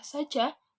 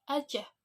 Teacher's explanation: Pelesapan bunyi kata-kata bahasa pergaulan remaja ini memiliki kecenderungan melesapkan segmen pertama sebagai berikut. Ruas S yang menjadi pengawal kata sebagai berikut ini dilesapkan setelah didahului bunyi vokal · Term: pelesapan S